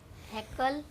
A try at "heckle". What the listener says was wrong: Heckle, heckle. No, not heckle. Kal nahi. Kul.